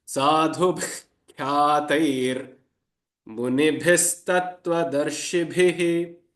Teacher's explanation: the visarga, the two dots, has to be pronounced with the guttural ha sound